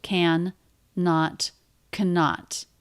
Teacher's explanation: We have two N's. It's just a single N sound.